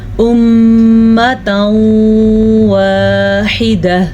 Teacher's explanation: نون ساکن یا نون تنوین کے بعد یا میم واو نون، ان چاروں میں سے کوئی سا بھی ایک حرف آ جائے تو ہم دونوں کو آپس میں ملا دیں گے اور غنے کے ساتھ ملائیں گے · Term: ادغام بالغنہ